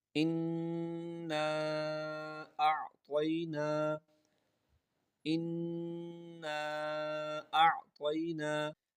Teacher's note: تو یہاں پر ہم نے غنہ بھی کیا، اور اس کے بعد اس کے اوپر مد ہے، اس کو کم از کم 3 الف کے برابر کھینچ کر پڑھیں گے، اور اس کے بعد حمزہ ہے، اس کو حمزہ کو عین کے ساتھ آواز کو ذرا واضح کر کے پہلے حمزہ کی آواز آئے، بعد میں عین کی آواز آئے